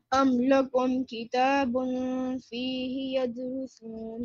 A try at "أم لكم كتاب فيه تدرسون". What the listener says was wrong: The dots are on the top, not at the bottom. Again.